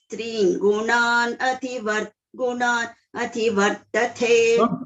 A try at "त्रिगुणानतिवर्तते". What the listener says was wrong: Don't break like that. Tringunan ativartate.